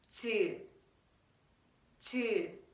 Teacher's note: So when you sound 즈, your tongue touches the middle palate. I mean the roof of your mouth, but the middle position here.